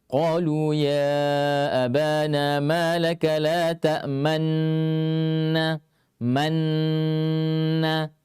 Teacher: Jadi rasakan setelah mati nun pertama ta'man, langsung monyong bibir. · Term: ismam